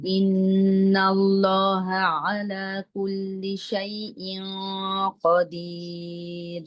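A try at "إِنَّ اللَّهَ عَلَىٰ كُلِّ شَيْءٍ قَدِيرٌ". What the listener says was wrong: ইন্নাল্লাহা, এই ইসমে দালাল মানে মাত্রা একটু বড় হবে। ইন্নাল্লাহা, লহা আলা, সমান হবে দুইটা।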